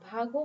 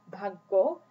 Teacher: if the medial consonant ga is replaced by its geminate form